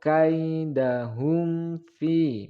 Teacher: mim sukun bertemu dengan Fa maka hukum bacaannya izhar syafawi tidak boleh didengungkan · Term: idhar syafawi